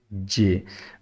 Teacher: जीम का जो मखरज है ना वो ज़ुबान का दरमियान और तालू दरमियान वाला, लेकिन टच तकरीबन यहाँ हो रही होती है, जहाँ से उभरी हुई जगह होती है रैबिट टीथ की बैक साइड पे, वहाँ से हो रही होती है।